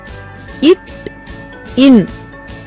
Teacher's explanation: ஆகிய 2 மெய்களும் நாவின் நுனி, அன்னத்தின் நுனியை பொருந்துவதால் பிறக்கின்றன